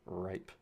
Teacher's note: you can feel there's some tongue curling in the front, the back of the tongue is moving more towards the pharynx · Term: R sound